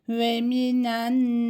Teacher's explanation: şeddeli olan nunlarda ve mimlerde hemen geçmiyoruz. Bir miktar tutuyoruz.